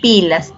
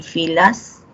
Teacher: en pilas oclusivo y en filas fricativo